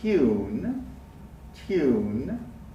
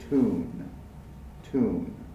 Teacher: But Americans and Canadians, for a different reason that we'll learn about a lot later, if the sound is a T, we don't make the Y sound. So British English speakers will say tune, tune, but American English speakers will say tune, tune.